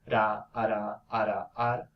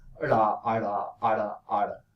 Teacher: So basically, in the retroflex, the place of articulation is behind, so it's more posterior.